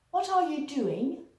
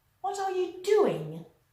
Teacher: using first a descending or falling intonation, which is neutral, and then a rising intonation